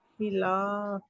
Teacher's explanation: خلاف، لام فی، کے اوپر زبر ہے، خلاف. لام کے اوپر زبر ہے، اس کے آگے الف آ رہا ہے تو الف مد آ رہا ہے، 2 کاؤنٹ اسٹریچ ہوگا یہ